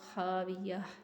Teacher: گول تا کو حالت وقف میں ہا میں بدل دیتے ہیں۔ خاویہ، تن نہیں آپ نے پڑھنا، خاویہ، کہ جب رکیں تو ہا کی آواز آتی ہے۔